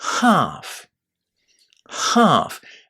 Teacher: A nice long a sound inside this word half. · The L. We don't say L in the word. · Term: silent letter